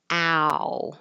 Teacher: So start with your mouth really open, ow, and get closed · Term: ow vowel